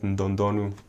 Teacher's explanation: D, there's like an N before it that's not right, it's nd.